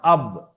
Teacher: দুই ঠোঁটের ভিজে অংশ থেকে উচ্চারণ হয় বা